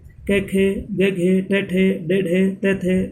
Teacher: वे ध्वनियाँ जिनका उच्चारण करते समय 2 उच्चारण अवयव परस्पर स्पर्श करते हैं, स्पर्शी ध्वनि कहलाती है।